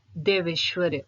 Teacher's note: देव जमा ऐश्वर्य, अ के बाद ए है तो दोनों मिलकर ए बन गए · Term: वृद्धि संधि